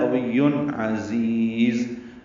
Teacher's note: عین حروف حلقی میں سے آ رہا ہے، عین وسط حلق سے ادا ہوگا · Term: اظہار حلقی